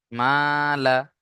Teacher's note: মিম আলি জবার মা এক আলিফ টান দেবেন